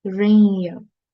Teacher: as you merge this tanween with waw mushaddad, you need to make sure it's a nasal sound